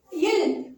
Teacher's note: இர், இழ், இல் இது மேல்வாய் பல்லின் அடியை நாக்கின் ஓரங்கள், மேல்வாய் பல்லின் அடியை நாக்கின் ஓரங்கள் தடித்து நெருங்குவதால் பிறக்கிறது. இல் இது மேல்வாயை நாக்கின் ஓரங்கள் தடித்து தடவுவதால் பிறக்கிறது